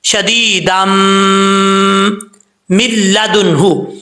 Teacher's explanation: ٹھیک ہے، تو یہاں پہ ادغام یرملون ہوگا، ایک الف کی مقدار غنہ بھی کیا جائے گا ایک الف کے برابر